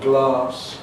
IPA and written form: glɑːs (glass)